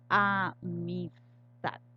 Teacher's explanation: hacemos la mayor fuerza de voz aquí en la última sílaba, que es tad. Esta se conoce como la sílaba tónica y estas dos de acá, que se pronuncian con menor intensidad de voz, se conocen como átonas.